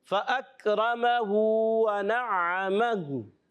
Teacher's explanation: کاف کو باریک رکھنا ہے، را پر زبر آنے کی وجہ سے را ہو جائے گا پر